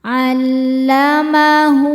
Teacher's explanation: Maka cara bacanya ha damirnya dipanjangkan dua harakat. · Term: mad silah qasirah